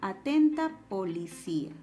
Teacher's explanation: La única secuencia que notamos es cia, ¿verdad? Entonces, como la cerrada I tiene la mayor fuerza de voz comparada con la A, decimos que aquí presenta un hiato acentual, ¿verdad?